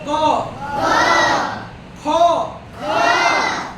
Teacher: क ख ग घ सब मुंह खुला रहेगा। तो इसका उच्चारण कहां से होता है? कंठ से। इसलिए तो इसका उच्चारण कंठ से होता है।